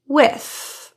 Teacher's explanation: your tongue tip is between your teeth and there is airflow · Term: voiceless th